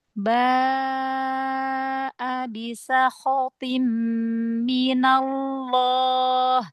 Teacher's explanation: Mad wajibnya panjangin empat atau lima harakat.